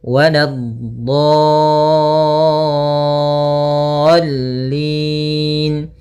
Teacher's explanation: Nah, jangan terlalu lama, jangan waladdallin. Cukup ya menekan di lamnya, kemudian dikasrahkan langsung. · Sebelumnya ada huruf mad berupa huruf alif yang awalnya dot, itu panjangnya 2 harakat karena bertemu dengan huruf yang bertasydid, maka dia panjangnya adalah 6 harakat. Untuk mad lazim musaqqal kalimi atau kalimi musaqqal panjangnya 6 harakat, maka panjangkan dotnya dulu 6 harakat, kemudian sempurnakan di dotnya, kemudian baru masuk ke huruf lam.